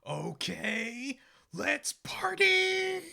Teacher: it sounds like it's more of a question rather than an exclamation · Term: weird inflection